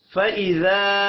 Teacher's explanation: ذا الف مدہ ہے، ایک الف کے برابر کھینچ کر پڑھیں گے.